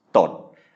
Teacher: mid-class consonant, dead syllable because of the stop final. So that means it is a low tone.